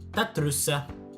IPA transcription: tat.ˈtrusa